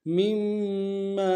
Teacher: میم کو اگلی میم کے سامنے لانا ہے، میم کے اوپر تشدید زور دیں گے، اگلی میم کے ساتھ الف مدہ ایک امتداد میں کھینچیں گے۔